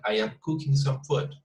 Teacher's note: The intonation tends to be very flat. If we just pay attention to each one of the sounds, each one of the words, the intonation gets very flat.